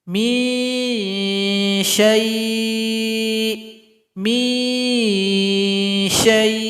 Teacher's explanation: Ikhfa awsat. Jadi bunyi dengungan sama dengan bunyi samar-samar. Jadi ikhfanya nanti mengarah kepada huruf shin. · Bunyi ikhfanya mengarah kepada huruf shin. Huruf shin tempat keluarnya di tengah lidah. Naikkan ke langit-langit.